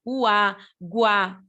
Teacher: O U a gente fala mais fraquinho, o A mais forte. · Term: ditongo crescente